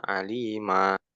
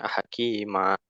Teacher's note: pada tanwin, ya fathah tanwin, maka kita berhenti pada alif, yang mana alif ini dinamakan alif mad iwad.